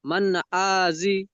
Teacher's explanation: নুন সাকিনের আওয়াজকে বিনা গুণায় জাহির করে তাড়াতাড়ি পড়তে হবে। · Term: ইজরা